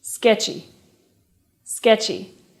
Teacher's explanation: so although you see the t written in the word sketchy you don't really hear the T sound when you say this word you mostly just hear /ch/